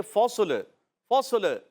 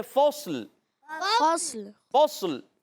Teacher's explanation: صاد کو موٹا رکھیں گے اور لام کو ہلائیں گے نہیں